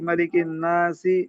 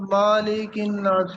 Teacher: میم پہ زبر کو مالک، بنا دیا، کھینچ دیا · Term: تمدید